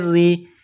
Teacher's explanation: را کے نیچے زیر ہے تو را کو باریک کرنا ہے، را کو یا کے ساتھ پلس کرنا ہے.